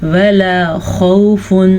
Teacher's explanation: ولا خوف، لام زبر الف لا، خوف واو ساکن سے پیچھے زبر ہے تو ہم واو یہ لین کو نرمی سے پڑھیں گے، بغیر کھینچے پڑھیں گے